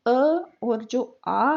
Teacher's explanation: अ और जो आ है वो कंठीय स्वर कहलाते हैं, यानी कंठ से बोलने वाले।